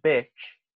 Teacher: Vocês veem como bitch, que é cadela, é mais relaxado e mais fechado